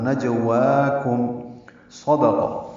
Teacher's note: کاف باریک، میم ساکن پہ اظہار